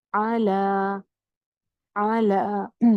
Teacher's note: زبر آدھی اور کھڑی زبر ایک الف لمبی